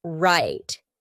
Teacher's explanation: when I said that final T my tongue was stopped at the top of my mouth that's why we call it a stopped T right right let's